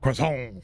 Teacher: in the US, we include the T at the end.